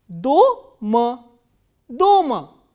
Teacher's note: The only difference between these 2 words are the position of stressed vowel. In the first word, the vowel O is stressed.